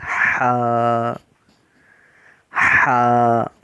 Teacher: ہا کو حلق کے درمیانی حصے سے ادا کیا جاتا ہے، اس میں ٹھنڈی سانس کی آواز آتی ہے